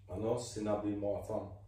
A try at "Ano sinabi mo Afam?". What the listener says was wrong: But you have to put some intonation in the end. Ano sinabi mo Afam? Ano sinabi mo Afam?